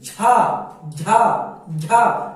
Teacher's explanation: तो आपकी जीभ जाके आपके उस तालु यानी जीभ के अंदर वाले तालु भी जाके टकराएगा, तो आप जान जाइएगा कि ये तालव्य है